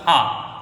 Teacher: ये वाला जो फ आदा होता है उर्दू वाला वो दोनों होठों मिलाकर फ ऐसे बोल दिया जाता है